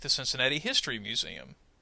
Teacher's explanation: Notice in this case I emphasized the word history, but I made it sound as if it's kind of an idea that belongs together. I didn't put any pauses between any of the words. I tried to make them sound like they belong together. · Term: thought group